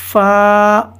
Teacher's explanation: اوپر کے دانتوں کے کنارے اور نچلے ہونٹ کے تر حصے سے ادا ہوتا ہے